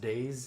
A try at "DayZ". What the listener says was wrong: Yeah, Days, but Z. There's a Z at the end of it. It's not an S. It's not a snake.